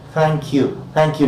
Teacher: your front of the tongue is against the upper teeth and you say thank you, narrow gap, air escapes with friction